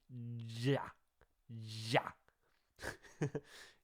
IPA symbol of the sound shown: dʒ